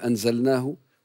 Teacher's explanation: لديك ضعف في حرف الهاء خاصه حال الوصل تظهر كانها همزه مسهله